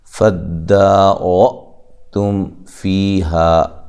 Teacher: را کو خوب موٹا کرنا ہے، حمزہ کو جھٹکے سے پڑھنا ہے